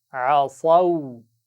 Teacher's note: صاد کو موٹا پڑھنا ہے، عصو نہیں پڑھنا، سین بن جائے گا، صاد کو موٹی آواز کے ساتھ پڑھنا ہے، اس کا خیال رکھیے، عصو، شاباش۔